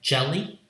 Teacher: Fourth one, jelly, jaw sound is another affricate. It's a voiced counterpart of cha sound.